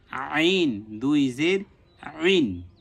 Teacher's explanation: আইন কণ্ঠনালীর মাঝখান থেকে উচ্চারণ হবে